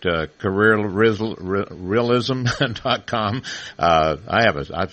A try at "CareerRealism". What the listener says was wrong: No, we take the extra syllable out. We just say Careerlism. We say it really fast.